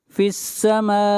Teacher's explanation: یہاں پر الف مدہ کے بعد حمزہ ہے اور اسی کلمہ کے اندر ہے، اس لیے یہ مد متصل ہے، اور اس مد کو 3 الف کے برابر کھینچ کر پڑھتے ہیں